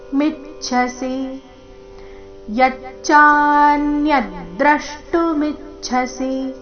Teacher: ಮಿ ಮೇಲೆ ಆಘಾತ ಕೊನೆಗೆ ರಸ್ವಸಿ